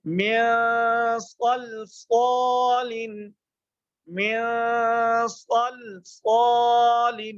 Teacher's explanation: حرف جو ہے صاد یہ پورا ہو رہا ہے، اس کو ہم نے موٹا کر کے پڑھنا ہے. تو اس کو موٹا کرنے کے لیے ہمیں زبان اپنے منہ کو کھولنا پڑے گا.